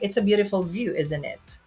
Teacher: So it's falling intonation. So it's just a statement.